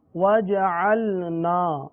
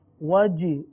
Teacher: وج چے کی آواز، جیم کے بجائے چے کی آواز، تو یہ صحیح نہیں ہے۔ وَجَعَلْنَا جیم کی آواز نکالنی ہے۔